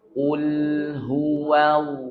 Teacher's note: Ini tebalkan sedikit, jangan kul, ya. Kul, ini kaf, kul, tapi angkat pangkal lidah sedikit, ya. Ul huwa, jangan huwa. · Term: huruf qaf